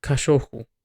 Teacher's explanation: in most Brazilian dialects, the guttural R at the beginning is not as rough. It can sound like h